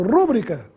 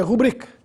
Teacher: tem a sílaba tônica na sílaba bri, portanto é uma paroxítona aí, sem acento gráfico.